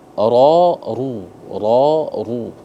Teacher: Ketika dia berharakat fathah dan dommah itu dibaca tafkhim tebal.